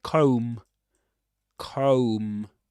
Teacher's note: You don't pronounce the final B again.